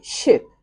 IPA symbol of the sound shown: ɪ